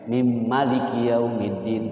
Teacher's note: Di dalam qiraat sab'ah bisa dibaca di dalam Fatihah itu ma dibaca pendek.